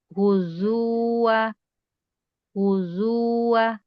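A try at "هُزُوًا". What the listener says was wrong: Zu-nya pendek Ibu.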